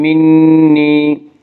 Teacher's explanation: منی یا مدہ وہ یا جو ساکن ہو اور اس سے پہلے زیر ہو، یا مدہ کو 1 الف کے برابر کھینچ کر پڑھیں گے